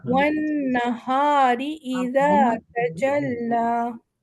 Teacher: यहाँ पर हम नून को गुन्ना देंगे।